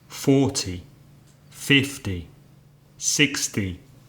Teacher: the numbers in their tens forty fifty sixty seventy have the stress on the first syllable